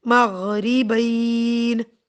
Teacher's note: مغربین، بین، یہاں پر یائے لین کو تھوڑا سا اسٹریچ کر دیں گے کیونکہ ہم وقف کر رہے ہیں